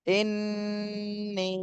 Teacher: উপরে তিন আলিফের চিহ্ন রয়েছে এজন্য তিন আলিফ টান দিতে হবে